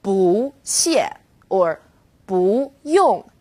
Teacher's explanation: boo when used on its own boo is fourth tone boo when boo is used before another fourth tone it becomes second tone